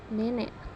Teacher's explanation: vokal E tengah bawah depan tak bundar pada kata nenek